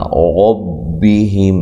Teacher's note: نون ساکنہ کا اخفا ہے مع الغنہ، باریک اخفا ہے، دال کو لمبا نہیں کرنا۔ ربہم، را کو خوب موٹا کرنا ہے، ہم، ہا کو واضح نکالنا ہے، میم ساکنہ کا یہاں اظہار ہے، میم ساکن کو ہلانا نہیں ہے۔